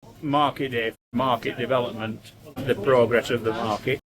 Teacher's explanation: This gentleman was consistently non-rhotic in the word market.